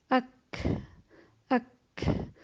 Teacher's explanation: ساتھ حمزہ زبر کو اک، اک، آپ محسوس کریں گے کہ کاف کا مخرج بھی جو زبان کی جو جڑ ہے اس کے سخت حصے سے لگتا ہے، تالو کے سخت حصے سے زبان لگتی ہے تو مخرج بالکل بند ہو جاتا ہے · پہلے آواز کو بند کیا گیا اور پھر ہلکے سے سانس کے ساتھ اس کو چھوڑا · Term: ہمس